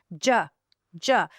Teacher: the j is an affricate, which means the sound is stopped and then slowly released with a friction.